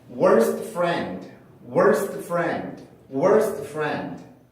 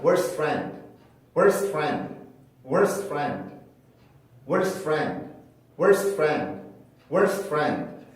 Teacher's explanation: T 발음을 아예 없앤 상태로 F로 바로 넘어갔습니다. S 발음을 해주고. 자, 이거는 제가 최근에 들어서요 발음을 하다가 이제 요것도 규칙이 될 수 있겠구나라고 생각을 했던 것 중에 하나인데요.